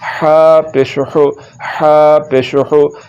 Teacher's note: آگے پھر یہ ہا آ گیا، اس کو حلق کے درمیان والے حصے سے ادا کریں گے